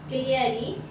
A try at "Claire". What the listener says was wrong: Okay, so that pronunciation will be Claire. Middle child name is Claire. Okay, don't say Clary, E silent over there.